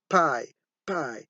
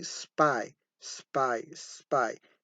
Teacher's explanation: pronounced with a release of breath at the beginning · PI with a puff of air at the beginning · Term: aspirated